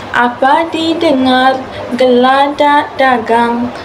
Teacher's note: yang memerlukan intonasi sedikit menaik pada akhir baris itu